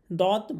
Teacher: মাড়ির দাঁতের গোড়া থেকে মোটা করে পড়তে হয়। অর্থাৎ জিহবার যেকোন একটা সাইড অথবা দুই সাইড মারির দাঁতের গোড়ার সাথে লাগিয়ে উচ্চারণ করতে হবে। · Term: দদ হরফের মাখরাজ